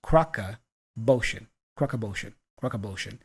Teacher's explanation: off is reduced to a schwa sound. It's just like we hear and the two words linked together like crock of bullshit.